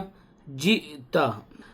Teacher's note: حمزہ ساکنہ ہے, پڑھنے میں جھٹکا دیں گے